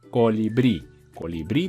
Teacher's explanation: cuando terminan en vocal n o s como por ejemplo colibrí colibrí tiene la sílaba tónica en último lugar